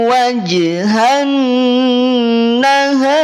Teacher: Ketika huruf ro kemudian dia sukun dan pula diawali oleh huruf yang berharokat fathah, maka ro-nya dibaca tafkhim.